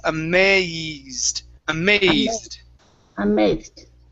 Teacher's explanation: give me a long A sound, that second A